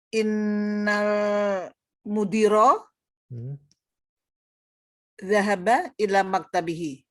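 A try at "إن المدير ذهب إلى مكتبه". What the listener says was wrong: Ila maktabi, betul ya Bu.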